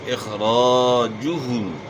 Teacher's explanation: اخراجہم ان کا نکالنا، خا کو آپ نے موٹا پڑھنا ہے، را کے اوپر زبر ہے، را کو موٹا پڑھنا ہے، اور یہاں الف سے پہلے زبر ہے تو الف مدہ ہے، زبر کو آپ نے کھینچنا ہے تو الف پڑھا جائے گا، اخراجہم، اور پیش کو آپ نے معروف ادا کرنا ہے۔